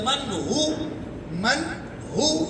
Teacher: من ہوا یا من ہو، من ہو، میم نون زبر من، نون ساکن کے بعد ہا آ گیا ہے، ہا حرف حلقی ہے، اظہار ہوگا